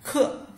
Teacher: chữ K người ta gọi là âm gốc lưỡi, nhưng mà luồng hơi đẩy ra rất là mạnh